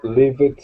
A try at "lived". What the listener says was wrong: Lived. Lived. Not livid. Lived. Yeah, as if there is no E there. It's just L-I-V-D. Lived.